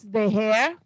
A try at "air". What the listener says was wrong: Yeah, but the air, not the hair. Yeah, the air.